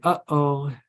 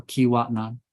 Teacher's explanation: that little catch stopping of air is a glottal stop